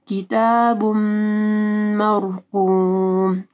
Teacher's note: تنوین ہے، ٹھیک ہے، اس کے بعد میم آ رہا ہے، تو یہاں پہ ادغام آ رہا ہے غنہ کے ساتھ. مرقوم، را ساکن سے پہلے میم کے اوپر زبر ہے تو را موٹی پڑی جائے گی، قاف کو موٹا پڑھنا ہے.